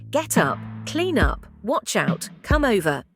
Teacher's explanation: the last consonant sound of a word gets attached to the first vowel sound in the beginning of the next word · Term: linking